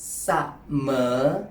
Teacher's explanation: low tone followed by rising tone.